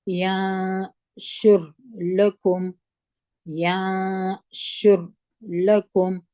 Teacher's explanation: لكم ينشر لكم یا مو په زور د نون سره وجنګول نون مو اخفا کی دوه حرکت غونه ده د اخفا غونه ده